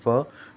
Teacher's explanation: व मतलब दांत, आप एक बार बोल के देखिए व, तो आपके दांत जो होंगे वो होठों पे लगेंगे, तो दांतों का उच्चारण, दांतों का किसके साथ संयोग होने पर, होठों के साथ संयोग होने पर केवल वकार से बोला जाता है, मतलब व का उच्चारण होता है। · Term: दंत ओष्ठ